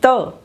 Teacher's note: यानी इनका जब हम उच्चारण करते हैं तो हमारा जिह्वा का जो अग्र भाग है वो ऊपर वाले जो दांत हैं स्पेशल रूप से, स्पष्ट रूप से कि त, जब हम ता बोलते हैं तो ऊपर वाले दांतों का जो पिछला भाग है उससे क्या करता है, जिह्वा का जो हिस्सा है वो क्या करता है, स्पर्श करता है। और स्पर्श करने के कारण जिन ध्वनियों का उच्चारण होता है उसे हम क्या कहते हैं, दंते ध्वनियाँ कहलाती हैं।